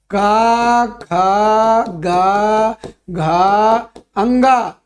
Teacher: इन सब का उच्चारण स्थान कंठ होता है